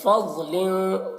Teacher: ضاد کو پر پڑھیں گے. ضاد میں قلقلہ نہ ہونے پائے